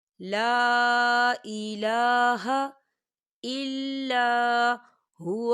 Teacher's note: لام کے اوپر جو ہے چھوٹی سی مد ہے، تو ہم اسے 3 حرکت کی برابر کھینچ کے پڑھیں گے